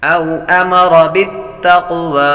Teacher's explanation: أرأيت إن كان على الهدى على الهدى أو أمر بالتقوى او امر بالتقوى، وحروف لین میں سے لمبا نہیں کریں گے اور آپ پر زبر و دورا کو پر پڑھتے ہیں، اور قاف حروف مستعلیہ میں سے بھی ہے پر کریں گے، اور قلقلہ میں سے بھی ہے قلقلہ بھی کریں گے۔